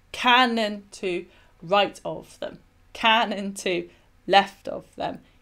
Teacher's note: So the emphasis is at the beginning of each metrical foot, so it's dactylic. · So it's dactylic because it's stressed, unstressed, unstressed. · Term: dactylic dimeter